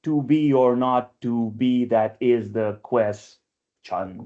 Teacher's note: It's iambic pentameter, but there's an extra syllable at the end